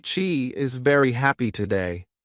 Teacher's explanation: stress she and happy, it sounds natural